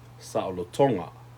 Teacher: you put the emphasis on the second to the last syllable when you add the nga